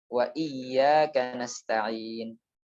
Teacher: kita telah Tampilkan kemarin Bagaimana gambaran ketika mengucapkan huruf hamzah yaitu dengan tertutupnya dua katup pita suara yang itu berada di pangkal tenggorokan bagian bawah dengan rapat Jadi jika kita tidak merapatkannya pasti akan kurang jelas suara hamzahnya